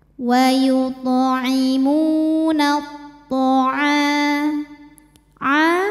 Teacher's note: tho wauimunath tha a hukum tajwidnya adalah Mad Thobi'i dahohiri sebab ada Alif didahului harakat fathah cara bacanya panjang dua harakat